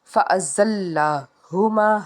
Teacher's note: ہا جو ہے حرف ہلکی کا حرف ہے، حلق کے نچلے حصے سے ادا کریں گے